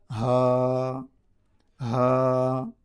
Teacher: بیچ حلق سے نہیں بلکہ نیچے حلق سے, بیچ حلق سے یہ ادا ہوں گے.